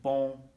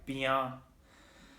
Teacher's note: so the vowels have nasalization